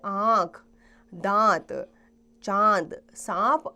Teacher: चंद्र बिंदु की ध्वनि को अनुनासिक कहा जाता है उसका उच्चारण नाक और गले दोनों से होता है